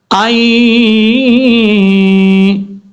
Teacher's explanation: ایک الف کی مقدار غنہ کریں گے · صرف نون کی آواز جو ہے وہ ناک میں جائے گی، نون کو مکمل طور پہ نہیں پڑھیں گے، ظاہر نہیں کریں گے، یہ یاد رکھیے گا۔